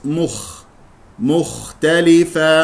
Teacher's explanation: الراء مفخمه لانها ساكنه قبلها مفتوح مختلفا ميم مضمومه ثم خاء لا تسحب ضمه الميم الى الخاء تجعل الشفتين مضمومه من الميم الى الخاء